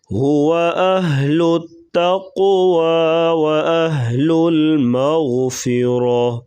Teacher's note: قاف کو پر پڑھیں گے اور قلقلہ کریں گے